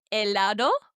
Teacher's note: 3 words that started with the letter H, ache. Notice how you didn't hear any of them? We pretended like they weren't there.